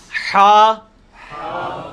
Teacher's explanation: حلوائی والا جو ہا ہے، یہ وسط حلق سے یعنی حلق کے درمیان سے نکلتا ہے. یہ کبھی آپ وہ گلے والی ٹافی کھائیں نا، وہ والی آواز ایکزیکٹ بالکل کلیئر وہاں سے جو نکلتی ہے نا، یہ ہا کا مخرج وہی ہے.